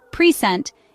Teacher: If we stress the first syllable, present, it refers to a gift. However, if we stress the second syllable, present, it becomes a verb meaning to give